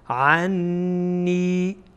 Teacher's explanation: غنه از بینی، صدایی که از خیشوم یا از بینی خارج میشه